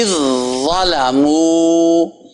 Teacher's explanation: اور آگے زال اور زا کا بھی اسی طرح ہے، اذ ظلموا، یہ آواز پہلے جا کے زا میں ٹک رہی ہے، یہ نہیں کہ زال کو پڑھا جا رہا ہے، زال زا میں ختم ہو گئی، مل گئی، مکس ہو گئی، اذ ظلموا۔